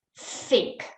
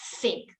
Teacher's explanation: And by 6, they get the voiceless, so like think. It's a th, but it's a voiceless sound. So there's no voice coming through.